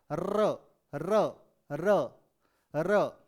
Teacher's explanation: तो अब र का जब उच्चारण करते हैं तो जीभ में थोड़ा सा एक कंपन महसूस होता है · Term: लुंठित व्यंजन